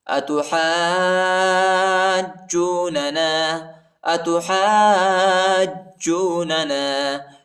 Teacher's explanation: ہا کے بعد جو الف ہے اس کے اوپر بڑا مد ہے، اس کو تقریباً 2-3-4 سیکنڈ تک کھینچیں گے اور ہا کو جیم کے ساتھ ملائیں گے، ٹھیک ہے۔ · فا کو لام کے ساتھ ملائیں گے